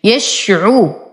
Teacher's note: أصبر على الشين وأعطيها التفشي، يشعو، وتم ضمة العين، عرو، أيضا وتم ضمة الراء.